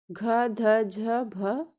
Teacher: घ कंठ से, ध दंत से, झ तालु से, भ ओष्ठ से।